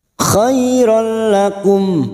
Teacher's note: fathah bertemu ya sukun Huruf layin kita lunakkan